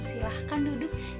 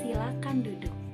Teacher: kesalahan berbahasa penambahan fonem H di tengah ataupun di akhir kata.